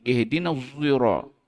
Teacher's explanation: Zai yang dimuncungkan. Itu disebut sebagai wajah ismam.